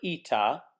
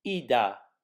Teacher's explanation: if the word ita takes on voicing between the two vowels, ita becomes ida